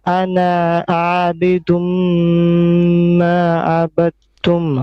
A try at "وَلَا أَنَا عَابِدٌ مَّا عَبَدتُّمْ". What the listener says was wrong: No, you're adding something after ana before abidum. You're adding something. I think you're adding another ain. ولا أنا عابد. أنا عابد.